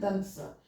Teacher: जीव जो है दांत को स्पर्श कर रहा है इसलिए इसका उच्चारण स्थान दांत है